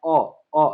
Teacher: मतलब कंठ से बोला जाता है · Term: कंठ स्वर